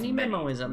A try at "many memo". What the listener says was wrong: Many memo, not mini. Many memos.